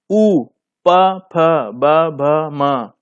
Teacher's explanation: दोनों ओंठ की सहायता लेनी पड़ती है, दोनों ओंठों की सहायता लेनी पड़ती है, तो इसकी श्रेणी ओष्ठ श्रेणी।